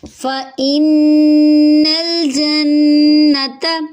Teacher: فا حرکت لمبی نہیں ہوگی، حمزہ کو نون سے ملائیں گے، تشدید ہے غنہ کریں گے، نون کو لام سے ملاتے ہوئے ہلائیں گے نہیں۔